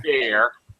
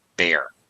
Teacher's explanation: It's because it has two vowels, and people try to pronounce both vowels, but actually, it's pronounced as one long A.